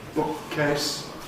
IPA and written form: ˈbʊk̚keɪs (bookcase)